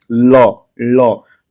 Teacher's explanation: जो ल होता है ये पार्श्विक होता है · जो ल को बोल दिए ल, ल, ल में देखिए जो पूरा जीभ का जो अगला सिरा है वो पूरा जो है आपके तालू को पीछे की तरफ टच कर रहा है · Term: पार्श्विक ध्वनि